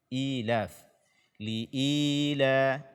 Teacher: Ya, ini panjangnya 2 harakat. Dia adalah mad badal.